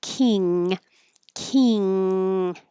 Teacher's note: It's like an ng combination and that means that the back of your tongue is going very high · So when you say king king, it's pushing the air to go through the nose instead of the mouth